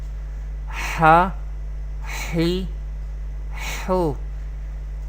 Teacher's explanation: It will be pronounced from the middle part of the throat.